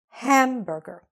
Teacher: The stress is on the first part.